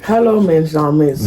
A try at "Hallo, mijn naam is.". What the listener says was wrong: Non, le J, il se prononce pas. Hallo, mijn naam is. Hallo, mijn naam is.